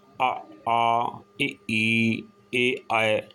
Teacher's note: अवृतमुखी, इसमें क्या है कि इसमें ओठ जो हैं वो गोल नहीं होते, आ ई ए आए, इसमें ओठ गोल नहीं होते।